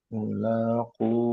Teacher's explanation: kofnya panjang dua harokat